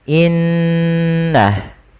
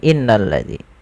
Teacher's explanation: Pada lafaz bacaan innalladzina, pada lafal inna di sini ada hukum tajwid berupa bacaan gunnah, yaitu yang ditandai dengan adanya huruf nun yang berharokat tasydid. Cara membacanya yaitu menahan suara gunnahnya dan menahan suara n-nya sepanjang 2 harokat, baru dilepaskan.